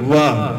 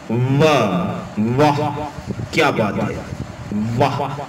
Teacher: अब जब आप वाह बोलेंगे तो ऊपर वाले दांत नीचे वाले होंठ को टच करेंगे।